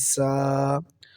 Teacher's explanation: زا، سیٹی کی طرح آواز آئے گی اس کو ادا کرتے وقت